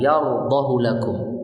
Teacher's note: ada ayat yardahu lakum, tidak dibaca panjang menurut riwayat Hafs.